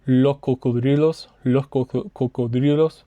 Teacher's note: casi la mitad de personas antes de un consonante hacen la H. Entonces dicen los cocodrilos.